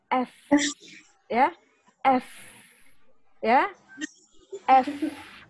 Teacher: gigi atas dengan bibir bawah ketemu.